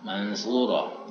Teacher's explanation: ini nunnya berbaur dengan sa, mansuro, sehingga ya ini muncul nun baru mansuro. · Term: nun dibaca ringan